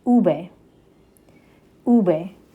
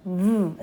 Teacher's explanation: Now, this letter can be a little tricky because in English, this letter is a vv sound, like where your teeth actually touch your bottom lip. In Spanish though, your lips actually come together to make a B sound.